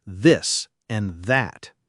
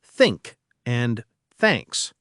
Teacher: The th can be voiced like in this and that, or unvoiced like in think and thanks.